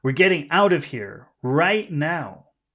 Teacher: the emphasis is on right